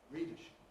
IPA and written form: ˈridəʃɪp (readership)